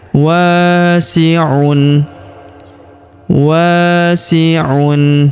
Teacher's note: Huruf wa kita panjangkan dua harakat karena terdapat alif di depannya.